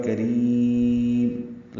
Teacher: کاف را یا میم سب باریک پڑھے جانے والے حروف ہیں، میم میں اظہار شفوی ہوگا، کریم لمبا کریں گے را کو اور میم پہ ہونٹ بند کر لیں گے